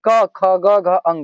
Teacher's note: क वर्ग का उच्चारण स्थान क्या होता है? कंठ होता है।